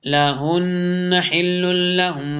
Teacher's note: نون مشدد ہے، اس کے اوپر ادغام بھی ہوگا، غنہ بھی ہوتا ہے